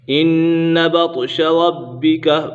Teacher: با کے اوپر قلقلہ بھی ہو رہا ہے اور یہ با مشدد بھی ہے، اسے جماع کے ساتھ پڑھیں گے۔